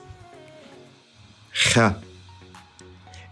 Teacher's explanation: It's pronounced from the top of the throat and almost closing the throat with your tongue.